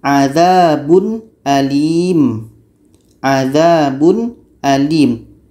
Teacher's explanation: izhar halqi dibaca jelas ya, jelas dan tidak dengung, jelas tanwinnya dan jelas hamzahnya.